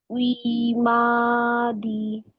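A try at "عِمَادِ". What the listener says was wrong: না, আইন কাজটা জাস্ট গলাটা ভেঙে মাদি।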